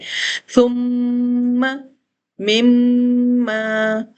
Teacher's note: میں نے one finger تک میم کے ساؤنڈ کو اپنے ہونٹوں سے روکنا ہے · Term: غنہ